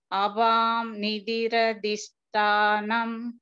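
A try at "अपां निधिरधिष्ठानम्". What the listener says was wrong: அபாம் வல பகினி அபான்னு சொல்லணும், அபான் நிதிர இம் போட்டிருக்கோம் பகினி, இம்மும் சொல்லலாம், ஆனா நம்ம இப்போ இன்னு ஃபாலோ பண்ண போறோம்.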